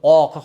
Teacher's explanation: Undan keyingi sifati bu qof harfi isti'ala, ya'ni o'zi bilan fatha kelganda bu a emas, balki tilning orqasini ozgina ko'targan holatda, yo'g'onroq holatda, oq holatda o'qiymiz.